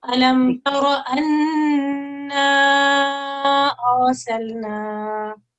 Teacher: کہ وہاں پر یہ مد زائد آتی ہے، اس کو مد منفصل بھی، چھوٹی مد، مد صغیر بھی کہتے ہیں، اور 3 سے 5 سیکنڈ تک اس کو لمبا کیا جاتا ہے